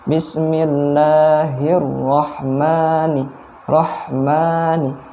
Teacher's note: ada huruf H ini mengalir baik secara nafas maupun suara